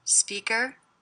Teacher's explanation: I notice my voice goes up at the end here. Speaker. That's because the sentence isn't over.